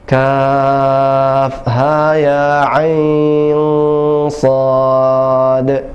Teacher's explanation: Jadi kaf 6 harokat, ya, ha dan ya 2 harokat, ain dan shad 6 harokat.